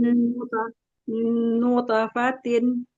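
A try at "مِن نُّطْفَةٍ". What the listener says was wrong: Ya, bukan nute ya. nutofatin. tapi nggak condong ke harokat fathah ya, lebih cepat ya karena dia pantulan. nutofatin. jangan nute. nutofatin. Nutofatin. tebal. Jadi bukan te ya.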